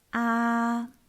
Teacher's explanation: When you pronounce the first tone, you should try to keep it high and flat. Now open your mouth and try to say it loudly.